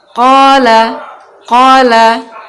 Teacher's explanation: Jadi harusnya ketika kita mengucapkan huruf ko itu bibir tidak usah membulat atau tidak usah monyong, karena huruf qaf itu bukan huruf bibir tapi huruf pangkal lidah